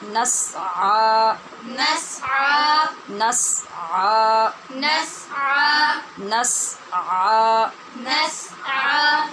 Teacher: ادھر کھڑی زبر ہے، عین کے اوپر اسے لمبا کرنا ہے